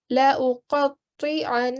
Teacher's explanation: And remember to make the sound of Ghunnah here because it's a noon mushaddad, so we will give it a 2-second sustained nasal sound